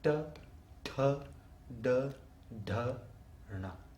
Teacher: the tip of the tongue rolls back and hits the front roof of the mouth, the front part of the arch